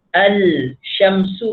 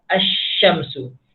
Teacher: Tapi ketika mana kita baca asy-syams, lam ini kita dah tak bunyi dah. Terus masuk pada huruf seterusnya. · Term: alif lam syamsiyah